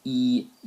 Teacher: c c uh and it's always going to be followed by a very forward uh vowel sound like e e is produced at the very front of the mouth